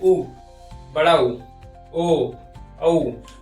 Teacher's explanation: जिनका उच्चारण करते समय ओष्ठ गोल हो जाता है। ओष्ठ जो है हमारा होंठ जो है गोल हो जाता है, उसे हम लोग वृत्तामुखी या वृत्ताकार स्वर भी कहते हैं।